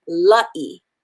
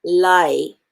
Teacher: we have an okina there which puts a glottal stop between the a and the i so it becomes la e l a i a is pronounced